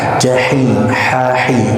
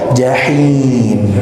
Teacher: huruf ha kita maksimalkan untuk setipis mungkin, namun jangan sampai menyentuh sehingga ada getaran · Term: ha kecil